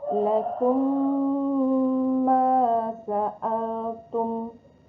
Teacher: Mim mati bertemu dengan huruf mim berharokat fathah, ditahan dan didengungkan selama 2 harokat. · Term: idgham mimi